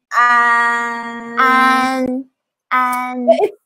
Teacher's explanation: An is a front nasal sound. So whenever you pronounce an, an, it's kind of like the focus is in your nose.